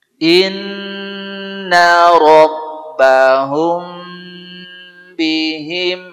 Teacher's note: mim sukun itu ada hukum setiap ketemu mim sukun ada hukum kalau ketemu ba namanya Ikhfa Syafawi ada gunah